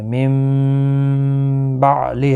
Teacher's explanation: نون ساکن کی آواز میم میں بدل جاتی ہے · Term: اقلاب